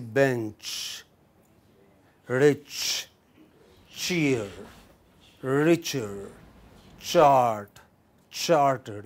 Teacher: it's a total obstruction and gradual release